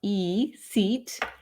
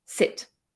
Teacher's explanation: Make sure you elongate the long vowels, ee, seat, and really shorten the short ones, sit